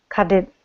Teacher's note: your tongue becomes like the wing of a bird it flaps